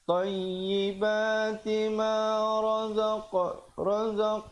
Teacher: ada pantulan di situ qalqalah sughra